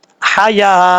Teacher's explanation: اگر یہاں پہ وقف کریں گے تو تا کو ہا سے بدل کر ساکن کر دیں گے